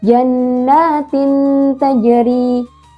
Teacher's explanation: Dibacanya bagaimana? Dibacanya samar dan berdengung.